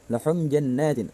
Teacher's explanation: Maka cara bacanya dengung karena merupakan gunnah musyaddada.